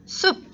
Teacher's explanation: 프 소리 대신 브로 바꿔서 발음을 하고 있습니다.